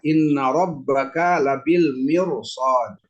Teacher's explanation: setiap huruf ro yang sukun didahulukan oleh huruf yang berharakat kasrah kemudian diiringi dengan huruf istilla huruf istilla maka dibacanya dengan mentafimkan atau menebalkan suaranya